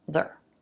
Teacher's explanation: R reduces and we lose it. It has the same sounds as the reduced there, so it blends in.